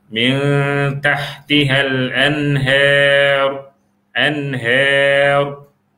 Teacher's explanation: Sebab huruf ra itu ada sifat tadkhim, tebal. Jadi dia kena baca min tahtihal anhar, anhar.